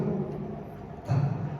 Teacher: Kalau ta salah satu sifatnya ada yang namanya hams yang kita ketika penyebutannya harus ada desis.